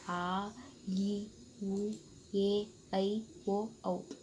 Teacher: ಇದು ಎರಡು ಮಾತ್ರ ಕಾಲದಲ್ಲಿ ಉಚ್ಚರಿಸುವಂತ ನಾವು ದೀರ್ಘ ಸ್ವರ ಅಂತ ಕರೀತೀವಿ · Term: ದೀರ್ಘ ಸ್ವರಗಳು